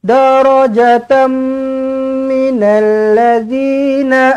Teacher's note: Tanwin tak selari bertemu dengan mim sabdu. Jumpa dengan mim sabdu, terus rapat terus bibir, dengungkan dua harakat. Di sini bunyinya tam lah.